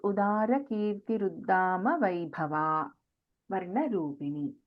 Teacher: So, here there is no Mahaprana in this Uddama.